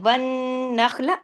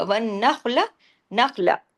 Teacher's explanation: نون تشدید کے ساتھ ہے، بڑا غنہ ہوگا، خا ہیوی ہوگا